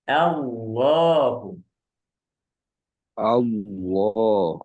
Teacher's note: berharakat fathah dan dah maka lamnya ditebalkan contohnya adalah Allahu Allah tapi bunyinya tetap a ya dari a bukan bukan o